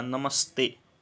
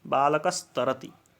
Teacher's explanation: वैसे ही नमः जब ते के साथ जुड़ेगा तो आगे त वर्ण होने के कारण विसर्ग को दंत्य स हो जाएगा और शब्द बन जाएगा नमस्ते।